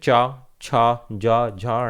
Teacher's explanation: जीभ हमारे ऊपर के हिस्से यानी कि ऊपर के तालव्य पर लगती है, जीभ का अग्रभाग जो होता है।